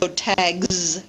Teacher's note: if we have a voiced sound as in tag the s ending is pronounced differently it's pronounced voiced Z instead · the s ending is pronounced differently. It's pronounced voiced z instead, so tags. And this is an example, again, of what we call progressive assimilation.One sound conditioning the pronunciation of the second sound.